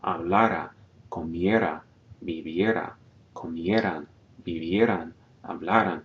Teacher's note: We're only stressing usually the second to last syllable. Hablara, comiera, viviera, comieran, vivieran, hablaran, unless the vowel has a written accent.